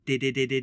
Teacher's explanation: sound now let's try the voiced D sound did it and you can just feel the very tip of your tongue on the gum Ridge there